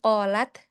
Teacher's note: Perhatikan jika ada sukun pada ta dan kaf ya ada percikannya di situ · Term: percikan hams